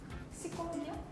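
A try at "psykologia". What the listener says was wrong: 첫 번째 Y는 아마 그 Y 사운드 아니고 으? 스콜로지아 아니에요?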